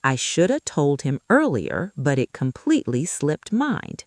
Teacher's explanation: Slipped drops the T sound at the end and becomes slip.